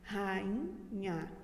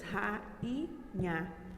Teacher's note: rainha é uma palavra que ela é hiato tá rainha e também é paroxítona tá a sílaba tônica é o i.a. ela tem três sílabas